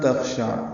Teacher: خا ساکن ہے اور اس پہ حمز ہے. شین عین جلدی ادا کریں گے، عین وسط حلق سے